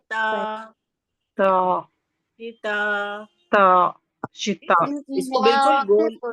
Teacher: ता बिलकुल सीधा निकलता है बारीक निकलता है। जबान की नोक को हमने सामने के ऊपर की दो दांतों की जड़ से लगाया